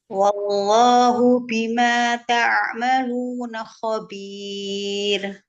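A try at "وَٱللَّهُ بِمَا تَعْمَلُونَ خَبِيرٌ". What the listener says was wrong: Nah, jaharkan lagi baknya. Bima. Bagus, ulang.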